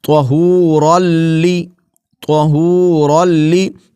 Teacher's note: طہورلی، طہورلی، طہورن نہیں پڑھیں گے، نون کی آواز یہاں نہیں آئے گی